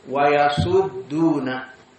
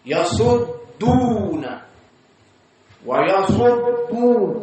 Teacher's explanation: Maka dalnya muraqqaqah, dadidu ad, yasud duna. Di saat shad di atas kemudian masuk kepada dal, maka dia turun